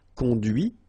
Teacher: final T is not pronounced